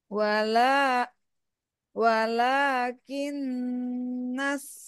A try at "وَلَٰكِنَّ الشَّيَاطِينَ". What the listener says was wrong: Ini sedikit, Bu. Sya-nya agak diberisikan. ولكن الشياطين